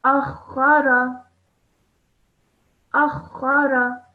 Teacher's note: Now all together, you have to put everything together by making sure that you sound all the letters, not rushing through them, and also making sure that you press down on the mushaddad letter, which is kha